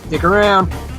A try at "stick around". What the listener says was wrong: You said stick around, but the S did not come into the sound. So all it sounded was, "Dick around."